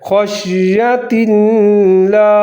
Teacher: خا کو شین کے ساتھ ملا کر پڑھنا ہے اور خا کو موٹا کر کے پڑھنا ہے